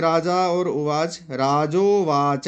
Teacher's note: राजोवाच ये गुण संधि का नियम लगा है यहाँ। अ और उ को ओ हो गया है।